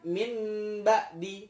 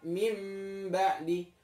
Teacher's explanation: Mengubah sesuatu. Ya, ini yang tadinya nun mati atau tanwin, ketika bertemu dengan ba, maka dia menjadi mim, berubah. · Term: iqlab